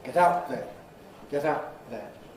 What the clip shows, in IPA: ˈget ˈaʊʔ ðen